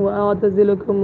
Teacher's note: واو کے بعد حمزہ ہے لیکن درمیان میں آنے کی وجہ سے بھی نہیں گر رہا، اس لیے کہ قطعی ہے